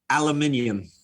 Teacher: when they try to say it the British way. They put an extra syllable in it.